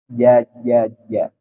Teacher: kalau Jim Tengah lidah menempel ke langit-langit atas jadi tidak ada ceritanya kalau di tajwid itu Jim itu ja